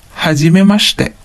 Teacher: notice that the I in the shi syllables become silent.